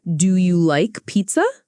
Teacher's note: repeat this question with rising intonation. Do you like pizza? Make your voice go up at the end.